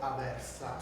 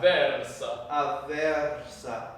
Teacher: so it's the emphasis on the double V